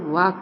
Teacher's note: वा का उच्चारण दंत और ओष दोनों से होता है